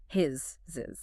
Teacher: The target is that voiced Z, the buzzing sound.